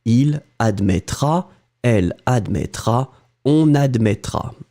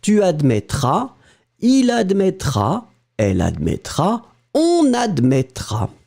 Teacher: So in fact, tu and il, elle, on will be pronounced exactly the same way, but don't forget to put the S for the tu form.